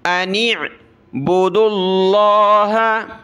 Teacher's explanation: عین کو گلے سے نکالیں